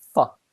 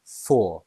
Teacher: So for has two pronunciations, the weak pronunciation, f, and the strong pronunciation, for.